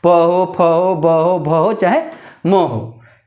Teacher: बिना ओठ सटाए प का कोई भी चीज़ नहीं बोल सकते हैं। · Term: प वर्ग